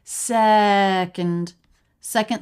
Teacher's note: So we have syllable stress on se. Second. Second syllable very fast.